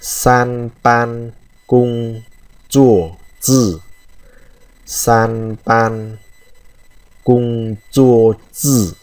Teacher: ba cái chữ đầu tiên này nó đều là thanh một, cho nên chúng ta đọc hơi dài ra một chút